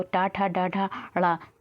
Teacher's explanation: टा वर्ग जो बोला जाता है वो आपका मूर्धन्य से बोला जाता है। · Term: मूर्धन्य ध्वनियाँ